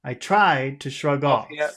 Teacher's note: the words we'll emphasize will be tried and off